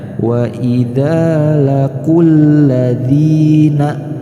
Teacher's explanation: tidak dibaca matobi, akan tetapi langsung dileburkan huruf qaf dengan huruf lam